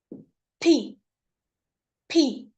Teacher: P is a voiceless sound. Again, voiceless sound, okay? And it is uttered or pronounced with a puff of air. Puff, मतलब आप जब इसे P को pronounce करेंगे, so you can hear a puff.